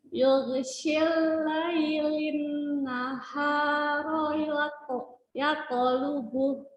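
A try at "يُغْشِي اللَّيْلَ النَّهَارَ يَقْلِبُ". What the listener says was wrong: Ini ya-nya agak tebal nih, ketemu pok ya. Jangan tebal.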